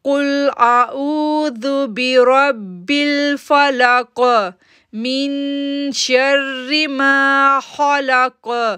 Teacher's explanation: और ये जो रेड कलर आ रहा है इसमें हमने ये कलकला लेटर हैं, काफ के ऊपर जज़म आ जाएगी, काफ के ऊपर जज़म हो जाएगी तो वहाँ पर हम बाउंसिंग साउंड बनाएंगे